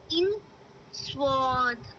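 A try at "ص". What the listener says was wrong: ज़ा, ज़ा, ज़ा। आपकी जो टंग है ना वो पूरी मुड़ रही है, उसको हमें नीचे वाले दांतों से टच करनी है, नीचे। ज़ा, ज़ा, ज़ा, ज़ा, सीन, स्वाद। सीटी, जैसे सीटी आती है ना प्रेशर कुकर में, इस तरह से साउंड आनी चाहिए।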